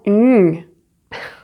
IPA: ɲ